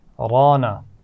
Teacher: را کو موٹا پڑھا جائے گا، اس کے بعد الف مدہ ہے تو ہم کھینچ کر بھی پڑھیں گے